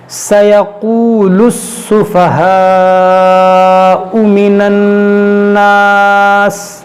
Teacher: سَيَقُولُ السُّفَهَاءُ مِنَ النَّاسِ، یہاں پر دیکھیں یہ الف مدہ ہے، الف سے پہلے زبر ہے تو یہ الف مدہ ہوا، اور الف مدہ کے بعد جو ہے حمزہ جو ہے اسی کلمے میں ہے، یہ سفہاء ایک ہی کلمہ ہے، تو یہاں پر مد متصل ہوگا، یعنی ہم یہاں پر کھینچیں گے 3-4 الف کے برابر